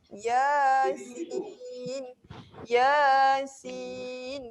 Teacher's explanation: Ya ni 2 harakat, bukan 1 harakat saja.